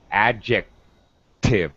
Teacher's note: I'm just not releasing it, so you can't really hear it. You hear a little glottal, not really a k. You don't hear the aspiration. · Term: unreleased sound